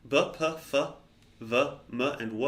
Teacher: b, p, f, v, m, and w are all labials. You can feel that they all use the lips